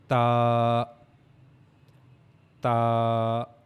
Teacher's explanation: And then we read about Ta, that for pronouncing Ta, we have to use the tip of our tongue and the upper incisor, the gums of upper incisor. Okay, we have to connect the tip of tongue to the upper incisors gum